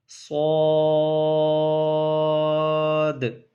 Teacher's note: پڑھیں گے، لیکن اس کو جب ہم پڑھنا شروع کریں گے سیٹی کی آواز بھی آئے گی، موٹا بھی پڑھنا ہے، اور آخر میں ایک ساؤنڈ کریٹ ہوگا